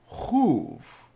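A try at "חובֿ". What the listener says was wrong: You would think, given everything we've learned so far, that this word would be pronounced chuv, but it's actually pronounced choiv. Often, in Ashkenazi pronunciation of Hebrew words, a vav is pronounced as an oi and not as an o or an u. We see this in words like toive.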